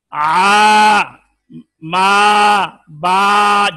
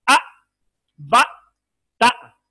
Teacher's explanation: الف میں ہے رخوت، مثلا آ ما با جتنا چاہے لمبا کریں، آ با آواز جاری ہے